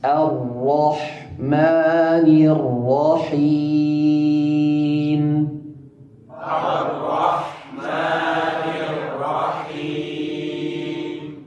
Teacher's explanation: Ra di sini perlu diperhatikan bahwa ra-nya dalam keadaan mufakhamah, dalam keadaan tebal.